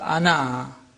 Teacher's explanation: One in pausal form, where alif is pronounced, ana.